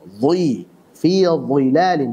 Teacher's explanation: Jadi huruf dha dia punya sifat itbaq, tebal banget. Saat kasrah maka juga terasa itu sifat itbaqnya. Dhi, fi dhilalin, jangan sampai fi dhilalin, tapi fi dhilalin.